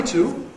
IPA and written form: tu (to)